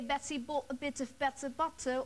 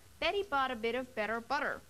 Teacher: Remember the first day I told you that the Americans flap the t sound? It sounds like an almost d sound. And not keep it crisp and clear like the British.